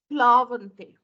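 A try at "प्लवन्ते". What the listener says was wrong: Plavante. There is no dirgha. Plavante.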